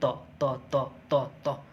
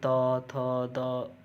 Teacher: जो जीवा है वो दंत को छू रही है